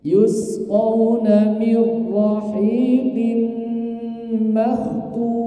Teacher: Nun sukun bertemu dengan ra. Itu masuk ke tasdid. Kemudian apa? Terjadi dalam dua kalimat, jangan disertakan di situ suara dari rongga hidung. Yusqawna mirra langsung mirra hakada. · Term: idgham bila gunnah